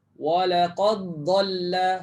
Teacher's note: jangan bunyikan dal lagi. Tapi terus sebut huruf dad.